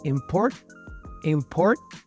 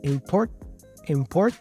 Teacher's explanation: down you have this sound T So to make this sound you cannot release the T you have to go import import you see my tongue is kind of up but it stops there import import and then I continue the Sound by now making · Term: non-released t